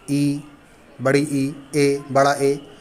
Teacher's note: अग्र स्वर, जिन स्वरों के उच्चारण में जीभ का अग्रभाग काम करता है।